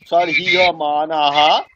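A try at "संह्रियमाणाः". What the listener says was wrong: সম্হ্রিয়মাণা, হ্যাঁ সম, অনুস্বার আছে একটা, হ্যাঁ সম্হ্রিয়মাণা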